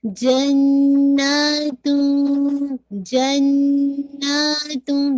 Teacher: नून पे आपने 2 count hold भी करना है और आपको स्ट्रेच भी 2 काउंट करना है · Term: गुन्ना